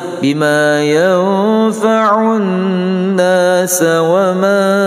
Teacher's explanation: Jadi kalau kita waqaf bima yanfa'un nas, maka boleh panjang lebih daripada 2, enggak apa-apa. Tapi kalau kita sambung bima yanfa'un nas wa ma, maka panjangnya 2 harakah sahaja. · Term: mad arid li sukun